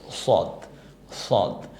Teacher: সদটা বলার সময় একটু জিব্বাটা যেন দুই পাশ থেকে একটু গোল হয়ে আসে।